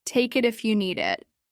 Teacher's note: In take it, the K connects with the I. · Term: Consonant vowel linking, Consonant-vowel linking